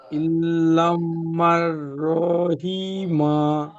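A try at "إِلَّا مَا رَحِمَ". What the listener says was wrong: ঠিক আছে, কিন্তু এখানে ইল্লা এই লামাল হয়ে যাবার লা না, এটা কিন্তু এক আলিফ টান দিয়ে পড়তে হবে। হ্যাঁ, এটা আলিফ মাদ্দা হবে তো, এক আলিফ টান হবে। ইল্লা মার রহিমা।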